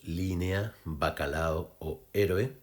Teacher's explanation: encontramos vocales medias combinadas entre sí o con la abierta y en un mismo impulso silábico, es decir, sin conformar un hiato, sino de forma diptongada